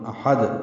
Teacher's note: دال ساکن پہ قلقلہ ہوگا وقفاً